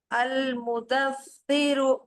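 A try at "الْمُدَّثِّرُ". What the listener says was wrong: अल-मुदस्सिरु, आपने दाल पे तस्दीद है।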